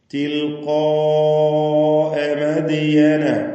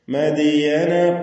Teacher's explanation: മദിയന ദാലിന്റെ സുക്കൂൻ ഖൽഖല സുഗ്റ നൽകി ശബ്ദം ഹറക്കത്ത് പോലെ ചലിപ്പിച്ച് വ്യക്തമാക്കുക